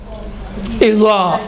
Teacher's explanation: इज़ा में ये सतह ज़बान ऊपर वाला जो तालु का हिस्सा है वहाँ कामिलन नहीं लगता है। इज़ा, ये देखें इज़ा मोटा तलफ़ुज़ होता है लेकिन कामिलन नहीं लगता है।